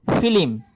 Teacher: এই যে মাঝখানে একটা রস্বই এসেছে, অতিরিক্ত একটা অতিরিক্ত স্বরধ্বনি এসেছে, যেটা এই আদি এবং অন্তের মাঝখানে পড়েছে, অর্থাৎ আদি বর্ণ এবং অন্ত বর্ণের মাঝখানে পড়েছে। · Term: মধ্য স্বরগম